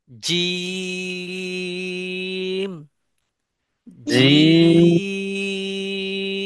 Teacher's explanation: এই হরফটা উচ্চারণের বেলায় আমরা তিন আলিফ পরিমাণ টানবো দৈর্ঘ্য করব